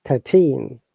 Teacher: thin numbers we stress on the second syllable